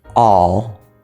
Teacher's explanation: the end of a syllable it will be pronounced as a half L